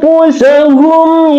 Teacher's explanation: Dia mim bertemu dengan ya, berarti di sini adalah ishar syafawi, dibaca jelas terang tanpa dengung. Contoh anfusahum ya.